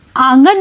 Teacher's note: जब आप आंगन बोलकर देखेंगे तो आप पाएंगे कि चंद्रबिंदु का आप उच्चारण कर रहे हैं तो ध्वनि नाक और मुंह दोनों जगह से निकल रही है